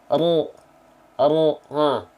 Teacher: huruf ro itu dilafalkan bukan menyentuhkan ujung lidah tapi seperti ini menyentuhkan punggung lidah ro R lihat bentuknya ujung lidahnya seperti V ya Karena ujung